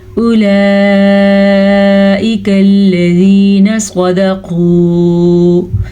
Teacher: مد کو کھینچ کے پڑھنا ہے. واو نہیں پڑھی جائے گی کیونکہ واو کے اوپر کوئی بھی حرکت نہیں ہے